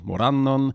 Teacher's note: it's stressed on the second syllable